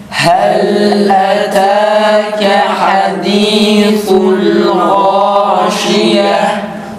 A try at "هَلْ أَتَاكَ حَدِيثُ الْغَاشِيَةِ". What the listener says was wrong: darın esresi çıkıyor yalnız dikkat edelim. Haddi değil hadithul esrenin iyi çıkması için dudağımızı geri çekiyoruz. Hadithul tekrar